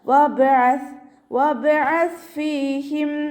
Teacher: സ കൊൽക്കല ലെറ്ററിലാത്തത് കൊണ്ട് ഹാഫ് സുക്കൂന് കൊടുക്കുക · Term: കൊൽക്കല ലെറ്റർ